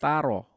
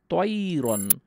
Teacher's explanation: তয়রন বলার জন্য আপনার জিভ উঠাতেই হবে। জিভ যদি না উঠাই তাহলে তা, আর জিভ যদি উঠাই তাহলে ত। এইটা হলো খুব সচেতনভাবে আপনাকে এই সিফাতটাকে বসাতে হবে, না হলে কিন্তু আপনার তা এবং ত শুধরাবে না।